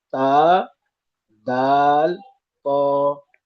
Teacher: जबान की नोक को सामने ऊपर के दांतों की जड़ से लगाकर तीन हुरूफ निकलते हैं।